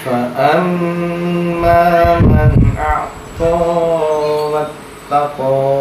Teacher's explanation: bacaan gunna atau yang berdengung di mim tasjid